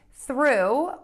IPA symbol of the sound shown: θru